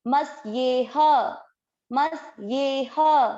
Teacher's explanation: ये ह पूरा है, मतलब ह के उच्चारण में अ मिक्स करना है